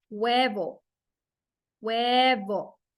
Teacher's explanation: in Spanish the letter H has no sound it doesn't have a sound you don't pronounce the letter H at all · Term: the Spanish H